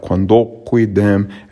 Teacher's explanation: the em became a nasalized e